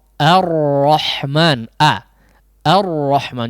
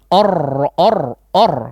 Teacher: huruf ra di sini betul ditebalkan ya, tapi huruf sebelumnya jangan terpengaruh terlebih dahulu ya